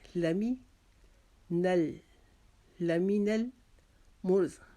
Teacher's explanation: میم کو باریک پڑھیں گے، را کو موٹا پڑھیں گے۔